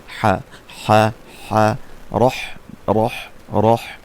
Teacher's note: হা হচ্ছে দুই নাম্বার মাখরাজ হলকের মধ্যখান হতে